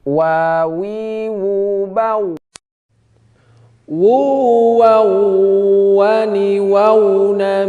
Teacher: Wa itu tidak dempet antara atas dan bawah, tidak dempet. Wa. Tapi tidak dempet, tapi hanya monyong saja, ya.